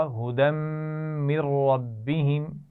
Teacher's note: नून साकिन के बाद रा आ गया है तो हम रा से मिलाएंगे भी लेकिन गुन्ना नहीं करेंगे। मिर रब्बिहिम, हुदम मिर रब्बिहिम, ये तीनों अल्फाज मिलाकर पढ़े जाएंगे तो इनका ख्याल रखना है।